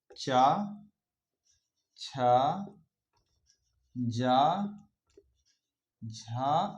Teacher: इन वर्णों को स्पर्श संघर्षी व्यंजन के नाम से भी जाना जाता है · हमारी जीभ का मध्य भाग ऊपर के तालू से टकराता है उन्हें तालु व्यंजन कहते हैं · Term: तालव्य व्यंजन